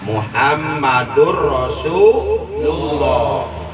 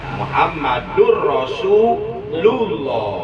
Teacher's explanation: lafzul jalalah tafkhim sebelum lafaz Allah terdapat huruf yang berbaris doma